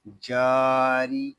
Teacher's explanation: جیم کو ہم ایک الف تک کھینچ کر پڑھیں گے کیونکہ یہاں پہ الف مدہ ہو رہا ہے۔ را زیری، را کو باریک پڑھیں گے کیونکہ را کے نیچے زیر آ رہا ہے۔